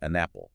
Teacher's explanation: The n sound from an kind of jumps over and attaches to apple.